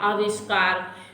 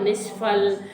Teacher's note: विसर्ग का हो जाता है आपका मूर्धन्य शा